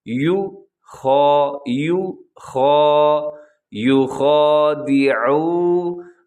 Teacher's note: عین پہ آپ نے پورا زور لگا دینا ہے کہ عین کا آپ اس کو حلق سے ادا کریں